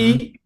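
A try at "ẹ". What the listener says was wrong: Yeah, yeah, you got it, but you don't have to use too much muscle.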